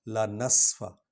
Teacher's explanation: سین کو سیٹی کی آواز نکلے گی، اور فا حرف شفوی ہے، وہ ہونٹوں سے نکلے گا۔